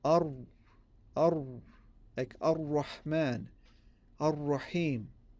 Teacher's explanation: this is the hard or the heavy sound of the ra.